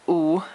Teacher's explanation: U is third tone, so you're going to go to the lowest part of your voice